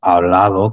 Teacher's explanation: la D, esa D entre vocales casi se pierde